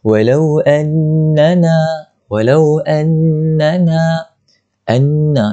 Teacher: Pertama, perhatikan pada walau annana, anna tu, perhatikan pada nun itu bertanda syaddah ataupun nun yang bertanda sabdu, maka wajib kita dengung, ataupun nama lainnya wajibul ghunnah, wajib kita dengung dua harakat dengung dia.